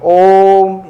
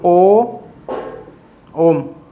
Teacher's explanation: ओम का उच्चारण करते हैं, तो कैसे करते हैं, ओम, इस तरीके खींचते हैं ना बहुत लंबी आवाज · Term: प्लुत